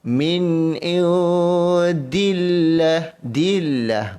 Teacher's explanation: Lafaz Allah bila bertemu dengan huruf dal yang berbaris bawah, maka kalimah Allah ini dibaca dengan cara nipis. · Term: dibaca nipis